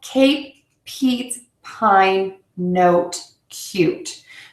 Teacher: you can hear they're a lot longer than the short vowels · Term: long vowels